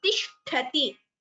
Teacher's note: Only shtha is Mahaprana.